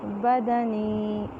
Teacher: بدنی یائے مدہ. یا ساکن سے پہلے زیر اس لیے الف کے برابر لمبا کریں گے